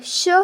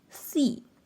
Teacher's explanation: When both ㅅ and ㅆ are paired with the ㅣ vowel, they are pronounced as a sh sound and not s